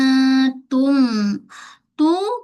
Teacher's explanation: hujung lidah kita kita tekan pada belakang pangkal gigi kacip atas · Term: huruf ta